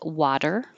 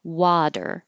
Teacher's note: The T changes to a D when it's between two voiced sounds. when you have vibration in the throat and all vowels are voiced.